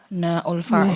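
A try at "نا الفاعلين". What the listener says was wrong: Na'ul fa'il. Jangan ada hamzahnya Bu. Na'al fa'ilin. Bukan na'ul fa'il. Na al-fa'ilin, bukan na'ul fa'ilin ya. Na al-fa'ilin. Kalau digabung ya nal fa'ilin, nal fa'ilin, nal fa'ilin. Kalau kita bacanya disambung.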